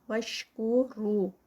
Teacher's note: واشکروا رو پہ 2 کاؤنٹس، واو مد